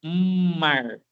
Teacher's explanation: Mesmo que for rapidamente, esse M passa pelo nasal. Você faz um jogo de ar na sua na sua articulação de começar pelo nariz, mar, né?